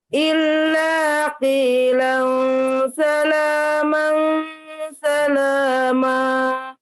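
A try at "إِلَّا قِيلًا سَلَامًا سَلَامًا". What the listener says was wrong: Ya, tebalkan di huruf qaf ya. Illa qilan salama salama. Jadi lam tasdidnya sifatnya lunak ya. Illa ditasdidkan saja tidak terlalu tekan. Tapi qi-nya boleh penekanan ditekan karena qaf kan hurufnya tebal. Qilang itu ya. Jadi tidak sama illa qilang itu terbacanya nanti kaf ya. Tapi ini hurufnya qaf.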